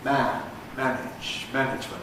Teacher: We have to make the a long in man, because it's got a whole word to occupy, single syllable. Not so long in manage, because there's an inch to come, and not nearly so long in management, because there's all of idiomt to fit in as well.